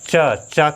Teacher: दांत के थोड़ा सा ऊपर हमारी जिह्वा जा करके थोड़ा सा टच करती है और एक ध्वनि उत्पन्न कर रही है। तो चा लाइन के 4 अक्षर जो होते हैं वो हमारे दांत के थोड़ा सा ऊपर यानी तालु पर हमारी जिह्वा जा करके स्पर्श करती है और ध्वनि का निर्माण करती है, इसलिए इसका उच्चारण स्थान क्या हो जाएगा, तालु हो जाएगा।